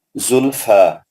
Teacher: وقف کی حالت میں بھی 2 حرکت لمبا کر کے فا وقف کریں گے. زلفا ان نون مشدد اگر یہ ملا کے پڑھیں گے تو زلف تب بھی سر تب بھی یہ 2 حرکت کھینچا جائے گا.